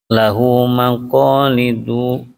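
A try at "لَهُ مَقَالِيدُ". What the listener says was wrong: Linya panjang.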